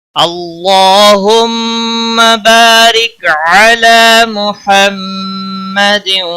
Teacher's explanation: اللہ کے لام کو موٹا پڑھیں گے، اس کے اوپر کھڑی زبر ہے، ایک الف کے برابر کھینچ کر پڑھیں گے، میم مشدد پر گنہ کریں گے۔